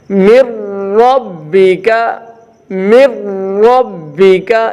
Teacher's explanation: جیسے من ربک، نون ساکن ہے، من نون ساکن ہے، نون ساکن کے بعد را ہے تو یہاں ادغام ہوگا لیکن غنہ نہیں ہوگا. نون ساکن کے بعد را ہے، یہاں ادغام کیا جائے گا لیکن غنہ نہیں کیا جائے گا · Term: ادغام بلا غنہ